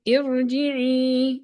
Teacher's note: a thin ra because it has a kasra before